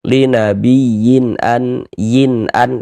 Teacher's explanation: Dibaca jelas. Jadi, bunyi nun sukun atau bunyi tanwin yang kita temu itu kita baca jelas. Kemudian tidak didengungkan maka baca pendek saja. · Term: izhar halqi